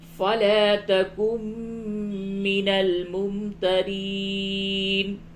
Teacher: میم مشدد ہے، غنہ کریں یہاں پہ